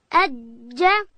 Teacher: جیم ادا کیږي د ژبې منځ به لوړ تالو ته ورولو